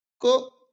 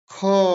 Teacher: ख क अल्पप्राण ख आप इसमें क्या करेंगे? महाप्राण बोलेंगे क्योंकि इसमें मेहनत ज्यादा लग रही है